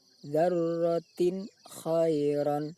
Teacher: bunyi tanwin dibaca jelas, tidak boleh dengung, juga tidak boleh samar antara jelas dan dengung.